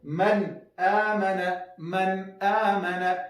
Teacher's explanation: زیاتوبه په غنه کې نه کوو، اوږدوالی به نه پکې کوو. من آمن او وقف به م نه کوو.